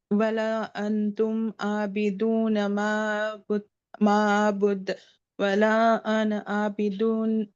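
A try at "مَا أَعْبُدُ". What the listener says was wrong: आपका भी हमजा और आइन में डिफरेंस नहीं सुनाई दे रहा है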